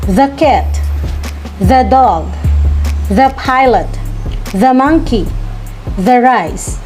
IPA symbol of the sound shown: THə